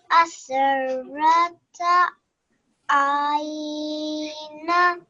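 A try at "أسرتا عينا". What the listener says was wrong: Ain is right, but you have to elongate this noon slightly here, because when we do a waqf here and we make this into a single fatha, so it'll be aina.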